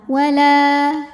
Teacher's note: cara membacanya huruf lam ini kita panjangkan dua harakat · Wala jika berhenti di la hukumnya adalah mad tabi'i karena ada alif yang sebelumnya didahului baris fathah. Cara membacanya huruf lam ini kita panjangkan 2 harokat. Wala. Nah, namun dibaca panjangnya ini hanya saat berhenti saja.